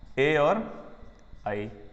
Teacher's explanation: यानी कि इसमें 2 उच्चारण स्थान आ रहे हैं। ए आई का अपन उच्चारण करेंगे तो कंठ का भी प्रयोग होगा और तालु का भी प्रयोग होगा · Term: कंठ तालु